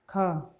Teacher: ख हो जाएगा, अघोष भी और महाप्राण भी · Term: अघोष महाप्राण ध्वनि